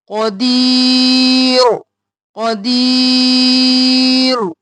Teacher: قاف موٹا اور یا مدہ ہے کھینچیں گے